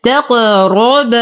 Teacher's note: نقلقل القاف مع التفخيم نفخم الراء